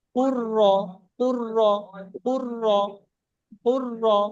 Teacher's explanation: কফ আর র হবে, মাঝখানে লামটা বাদ চলে যাবে, পুর্র, পুর্র, পুর্র, পুর্র।